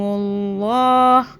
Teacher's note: اللہ موٹا ہو جائے گا، اللہ سے پہلے پیش آ رہا ہے